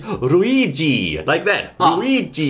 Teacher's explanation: in Japanese there isn't actually an l sound you'll have to say ruigi